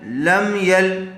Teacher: جزم والے حرف کو ساکن کہتے ہیں، تو یہاں میم ساکن کے بعد با اور میم کے علاوہ یا آئی ہوئی ہے، اس لیے یہاں پر اظہار شفوی ہوگا، میم کو ظاہر کر کے پڑھیں گے